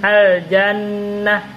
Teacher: mim bertasdid maka dia baca gunah dia harus dibaca gunah B didengungkan maksudnya dimasukkan ke dalam rongga hidung